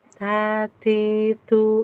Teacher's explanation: ternyata lebih banyak nafas yang keluar berarti hamas